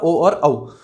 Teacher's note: कंठ और ओष्ठ की सहायता से कौन सा बनता है, ओ और औ